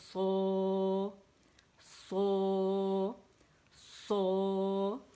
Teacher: او کی ساؤنڈ کو 4 کاؤنٹس پڑھیں گے